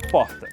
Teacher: R deles é mais forte saindo lá do fundo da garganta